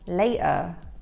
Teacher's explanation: So that's with a glottal T there.